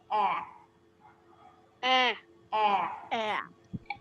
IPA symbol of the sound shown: æ